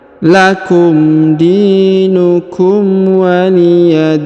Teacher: huruf di dibaca panjang dua boleh dua boleh empat boleh enam ya karena di depannya terdapat Ya Sukun